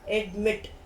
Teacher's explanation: Like we see admit, the stress is on mit.